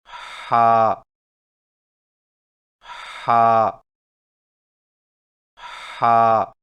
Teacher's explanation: ہا کی ادائیگی میں زبان کی جڑ کو حلق کی طرف مضبوطی سے دباتے ہوئے باریک اور رگڑ کھاتی سانس میں پڑھیں